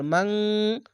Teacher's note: বাংলা অনস্কারের মত ইকফা গুনাটি হবে